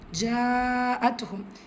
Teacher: ஒரே வார்த்தையில் மத்தை தொடர்ந்து வரும் ஹம்சா. ஸோ இது மத்துல் முத்தசில் 5 ஹரக்கத்தளவு நீட்டம் கொடுத்து ஓதணும். தா சுக்கூன் பெற்று வந்திருக்கு, ஹம்சுரை சட்டம் காட்சியை வெளிப்படுத்தி ஓதணும்.